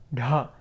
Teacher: You want to locate where the tongue is at the top, up here, cerebral, retroflex